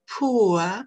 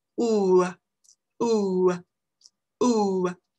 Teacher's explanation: c'est un OU qui va vers le schwa. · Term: une diphtongue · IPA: [pʊə]